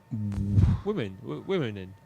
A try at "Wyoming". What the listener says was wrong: I don't think it's pronounced womening. Min-ing, because there would be an ing on the end of the in. I-N-I-N-G if it was womening. I think it's just yoming. No, it's yoming. The W is silent.